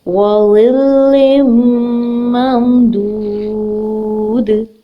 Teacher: واو کے اوپر ایک حرکت ہے, اس کو ایک حرکت پڑھیں گے, لمبا نہیں کریں گے.